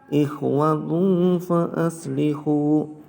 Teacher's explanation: Ada tamar butoh berharokatan windoma bertemu dengan huruf fa, maka disebut dengan ikhfa hakiki, dibaca samar-samar